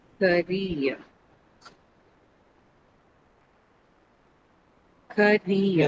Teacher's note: So you have ka and then rear. That ear that you hear is actually a diphthong sound.